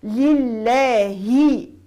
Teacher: اللام مرققه في لفظ الجلاله لانها سبقت بحركه الكسر